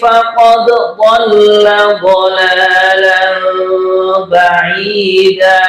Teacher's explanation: Jadi dalnya tetap kita tampakkan qalqalahnya.